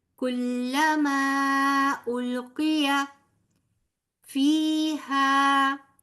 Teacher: یا مدہ فا کے بعد اور الف مدہ ہا کے بعد، لہذا فیہا دونوں کو 2 حرف برابر لمبا کریں گے